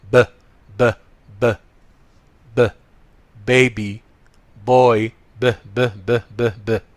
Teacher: bilabial ده البليس، مكان نطق الصوت ده ان هو with both lips يعني شفهي